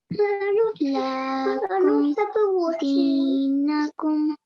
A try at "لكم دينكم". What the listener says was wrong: Okay, so make sure you don't elongate it where it doesn't need to be elongated. You see this vowel here? This is, do you know how long we recite that for? What's the vowel there? What is that stroke? What's it called? It's called a fatha, yes? And we recite it for 1 second and softly. So lakum, not lakum, it's lakum.